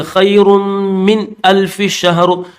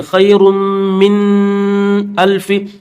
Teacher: یہاں پر غنہ نہیں کریں گے اس لیے کہ نون ساکن کے بعد یہ حمزہ آ چکا ہے